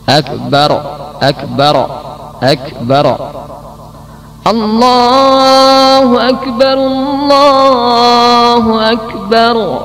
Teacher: Ini masuk kesalahan yang kecil. Yang ke-17 membuat qalqalah pada ra